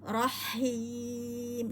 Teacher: hati-hati h-nya pada tengah tenggorokan ya jadi tipis